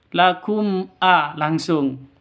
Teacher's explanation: Mim matinya jelas, hamzahnya juga jelas. Kenapa? Karena idhar safawi. Bacanya jelas, tidak boleh dengung. Ya. Lakum a'da, itu salah.